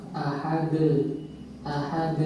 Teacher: Setelah kita melepaskan makhraj huruf dal dari dua alat pengucapannya, muncullah suara ahad, ahad. Kalau kita tidak memisahkan dua bagian alat pengucapan, niscaya pantulan suara tidak akan terjadi, qalqalah tidak akan terjadi.